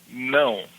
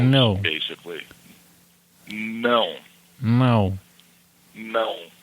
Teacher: It's very nasal, so you almost have to say it through your nose.